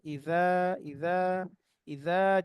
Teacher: জিভার আগা দাঁতের আগা লাগবে